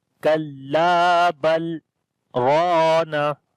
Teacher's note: we hold our voice, like we break our voice, but we do not break our breath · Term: sakta